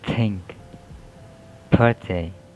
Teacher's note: And next are there is voiceless dental fricative